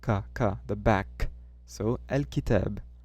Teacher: It's not with the tip of your tongue, it's with the back.